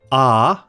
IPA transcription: ɑː